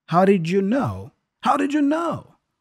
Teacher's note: the D there for did, the first did, is kind of a flap D as well, da, da, just like the flap T.